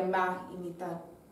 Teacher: la aspiración del S y elisión del D. En lugar de más y mitad, sería un poco más débil en la pronunciación del S y D, y sería más y mitad.